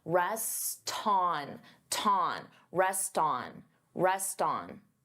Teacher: I'm linking the two words together and I'm transferring the T sound onto the vowel